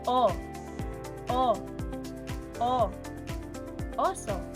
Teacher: Sa pagbigkas ng letrang O, ang bahagi ng dila ay likod. Samantalang sa gitna naman ang posisyon ng dila